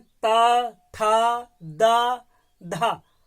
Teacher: ता यानी दांत में टच हो रहा है, यानी दांतों में हमारे जिह्वा टच हो रही है, तो इसका मतलब यह इनका स्थान क्या हो जाएगा, उच्चारण स्थान दंत हो जाएगा।